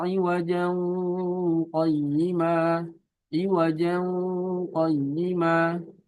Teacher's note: Misalkan sini iwajan ada tanwin, ketemu sama huruf qaf otomatis jadi iqfa.